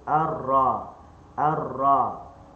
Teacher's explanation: Letak pada makhraj ra. Muka lidah di gusi yang timbul.